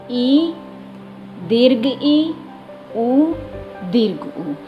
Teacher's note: मुख द्वार के संकुचित होने पर जो स्वर निकलते हैं उन्हें संवृत स्वर बोलते हैं।